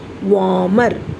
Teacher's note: Here R is silent, children. We should not give stress to R. So we should pronounce it softly. Warmer. R should not be pronounced at any cost.